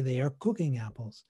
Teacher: And I wouldn't have to think upfront, explicitly and consciously, I have to accent the word cooking